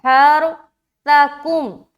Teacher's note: आगे चलें, आगे क्या है, हरसकुम, क्या है, हरसकुम, हा को रा से मिलाते हो, रा को मोटा रखेंगे और हा को बिल्कुल सीने की तरफ से निकालेंगे। हरसकुम, सकुम, देखिए सा में ना सीटी वाली आवाज नहीं आएगी, सा और सीन में यही फर्क है।